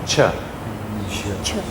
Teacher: It's a little stop and a little hiss after it.